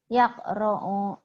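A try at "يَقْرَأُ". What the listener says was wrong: Yakra'u. Jangan yakra'u. Jangan ke ain. Yakra'u. Yakra'u.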